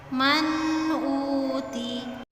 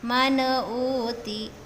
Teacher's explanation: Jadi ketika mengucapkan huruf nun sukunnya itu ya, karena bertemu dengan huruf salah satu huruf idhar ya, yaitu hamzah di sini, maka nun matinya, nun sukunnya itu dibaca jelas. Tapi hati-hati jangan sampai ada pantulan di huruf nun sukunnya.